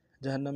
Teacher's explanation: جہنم میں ہا کو نون کے سامنے لیں گے، شد ہے زور دیں گے